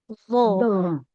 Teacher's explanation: Ujung lidahnya ditempelkan ke ujung gigi saya yang atas